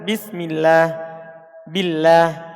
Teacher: Ini ada lafzul jalalah setelah kasro, maka dia dibaca tipis.